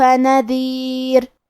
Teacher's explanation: کلمت نذیر میں آخری میں یہاں را کا حکم ہے ترقیق، لہذا ہم حرف الرا کو پتلی آواز میں پڑھیں گے